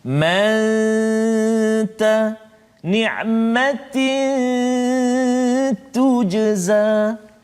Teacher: Huruf ikhfa hakiki yang pertama huruf ta, dengung 2 harakat · Sembunyikan kesempurnaan huruf nun itu ke dalam huruf ta. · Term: ikhfa ta